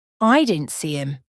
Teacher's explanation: the word didn't is often spoken so quickly that it sounds like dant and him might sound like Im